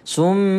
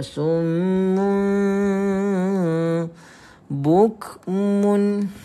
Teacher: so dengungkan juga berapa harakat dua harakat juga sum bukun kemudian Tuan Puan yang dirahmati Allah Subhanahu waala kita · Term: iklab